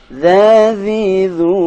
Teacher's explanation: posisi ujung lidah sama dengan huruf tha, yakni ujung lidah sedikit dikeluarkan.